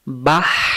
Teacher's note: লম্বা হায়ের উচ্চারণ স্থল গলার মাঝখান থেকে শোষ করে পড়তে হবে। লম্বা হা হলকের মধ্য থেকে শোষ করে পড়তে হয়।